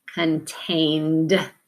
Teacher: the reason it's a d is because the n is voiced, so the d has to be voiced. There's 3 sounds the ed can make, and this time it's going to be the d.